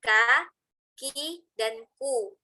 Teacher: huruf kaf itu punya sifat hamas atau mengalirnya nafas, tapi dia punya sifat syiddah, tertahan suara